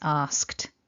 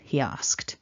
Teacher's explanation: the ed is actually pronounced as a t, so it's asked.